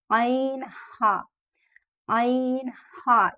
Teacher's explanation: यानी middle throat से अदा हो रहा है, वस्त हलक से अदा हो रहा है।